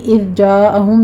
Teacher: زال کو نرمی سے پڑھیں گے، قلقلہ نہیں کرنا، یہاں پہ سیٹی کی آواز بھی نہیں آنی چاہیے۔ جاء میں مد متصل واجب ہے، 5 کاؤنٹ کر لیں گے۔